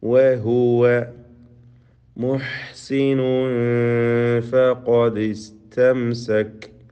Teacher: വഹുവ മുഹ്സിൻ സാധാരണ എപ്പോഴും സൂചിപ്പിക്കാറുള്ളതാണ് വാവിൻ്റെ ഉച്ചാരണം 2 ചുണ്ടുകളിൽ നിന്ന്. ചുണ്ടുകൾ വൃത്താകൃതിയിലാക്കിക്കൊണ്ട് വ ഉച്ചരിക്കുക.